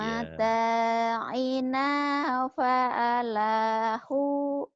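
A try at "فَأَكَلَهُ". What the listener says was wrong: Fa'akalahu itu kan bukan lam, itu alif. Pa'a. Pa'a ini pa'a. Bukan lam. kalau kalau lam nyambung, ini kan alif. yang ini alif tuh.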